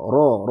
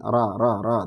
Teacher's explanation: huruf ro ketika fathah itu dibaca tebal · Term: ro tebal